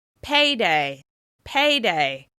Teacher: As you can hear, this word is stressed on the first syllable. This means the vowel sound A is longer, louder, and higher in pitch with extra clear mouth movement.